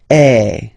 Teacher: So if you combine this uh vowel a with the vowel e okay you will get the sound e. So really open e